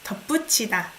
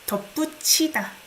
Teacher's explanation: I don't pronounce it as T. It's CH sound.